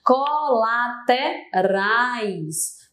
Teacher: Aqui eu tenho um encontro ditongo. É uma vogal e uma semivogal que não se separam.